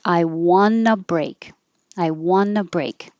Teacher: in this case I want a break the T disappears and it sounds like I won a break